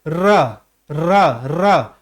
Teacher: आप उच्चारण करके देखिए, र र र, ऊपर वाला सिरा क्या होता है, वाइब्रेट होता है, कंपन होता है उसमें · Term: लुंठित वर्ण, कंपन जात वर्ण